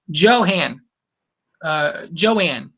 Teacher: when you flow the syllables together, you can hear it produce a faint aspirated sound between those syllables